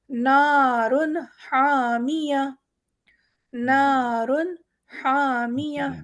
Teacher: یہاں پر ہمارے پاس ہا ہے اور یہ ہا حروف حلقی ہے، نارن، را کا بھی قاعدہ ہے، دیکھیں یہاں پر را بھی ہمارا موٹا ہو رہا ہے، نارن حامیہ۔